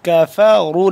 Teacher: را کو موٹا کر کے پڑھیں گے، کاف باریک ہے